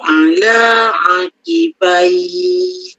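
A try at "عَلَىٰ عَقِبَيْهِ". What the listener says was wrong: Ulang. Kau kurang tebal. Ala aqibai.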